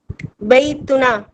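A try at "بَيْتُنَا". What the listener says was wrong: बैतुना। देखें, इस ना को खींचा करें, एक अलग। इसका आपको वजह मैं बताऊंगा बाद में इंशाल्लाह। बैतु क्योंकि एक अलिफ है ना, इसके अंदर उसका भी क्या कहते हैं, तजवीद का भी कायदा आता है।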